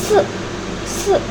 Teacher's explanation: termasuk ke dalam vokal apikal depan dengan posisi lidah tinggi. Bentuk bibir tak bulat